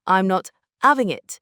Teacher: That H just disappears.